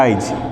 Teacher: আমি যদি বলি আইজ, তার মানে হ্রস্বের উচ্চারণটা ছিল শেষে, চলে আসছে সামনে, আগে চলে আসছে, এই জন্য এর নাম হচ্ছে অপিনিহিত।